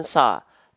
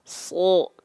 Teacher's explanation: Ketika dia berharokat baris atas, maka kan dia dilafalkan bukan sa, tapi so, keluarnya vokal O. Kenapa? Karena huruf shod termasuk ke dalam huruf yang tebal.